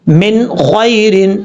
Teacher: یہاں سے ہجے کرتے ہیں، میم نون زیر من، خا یا زبر خوی، را دو زیر رن، من خیرن، نون ساکن کے بعد خا آ رہا ہے، حروف مستعلیہ میں سے ہے خا، اور حروف حلقی میں سے بھی ہے، نون ساکن کے بعد حروف حلقی میں سے ہے، اس لیے اس کو ظاہر کر کے پڑھیں گے، یہاں پہ اظہار حلقی ہوگا، نون کو چھپائیں گے نہیں، من خیرن اس طریقے سے۔ · خا حروف مستعلیہ میں سے ہے، اس لیے خا کو پر پڑھا جائے گا، موٹا پڑھا جائے گا۔